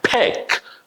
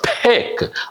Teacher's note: the K sound happening right back of your throat